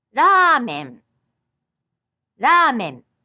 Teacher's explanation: To say a word like ramen, you put your tongue just briefly at the roof of your mouth like a soft D, then quickly bring your tongue back down.